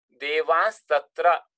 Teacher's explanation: So nakara changes into anuswara. This is anuswara, as you know, and the so it changes into this anuswara plus sibilant homorganic with the stop.